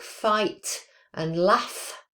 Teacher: So the voiceless labiodental fricative is f on words like fight and laugh.